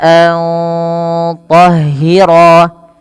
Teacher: suara nunnya perlu disamarkan kepada huruf to, maka tidak lagi dibaca antahhira.